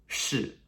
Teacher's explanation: s-h-i with a fourth tone okay that really sharp descending tone